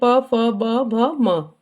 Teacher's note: दोनों होठों को आपस में मिलने से हम इन शब्दों को बोल पाते हैं। प भ म प वर्ग है। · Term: ओष्ठ